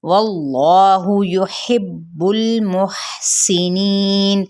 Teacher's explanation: ہا کی پیش کو لمبا نہیں کریں گے، ہا اقصائے حلق سے ادا ہوگا۔